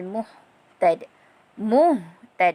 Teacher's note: Sebab ini adalah huruf ha di pangkal kerongkong